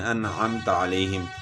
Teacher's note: نماز میں ہم پڑھتے ہیں نا صراط الذین انعمت علیہم، یعنی غنہ نہیں کرتے ہم، انعمت علیہم پڑھتے ہیں، یعنی انعمت اس طرح نہیں پڑھتے، غنہ نہیں کرتے، انعمت ہم پڑھتے ہیں انعمت علیہم۔ اور کیوں جو ہے نا غنہ نہیں کرتے کہ نون ساکن کے بعد حروف حلقی میں سے عین آ گیا ہے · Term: اظہار